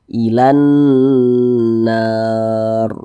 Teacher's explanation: Berarti nun bertasydidnya ini hukumnya gunnah musyaddadah. Cara bacanya itu digunakan tuh didengungkan. Jadi suaranya itu kita tahan, kita panjangkan sejenak. Ilan nar. Nah, kita panjangkan seperti itu.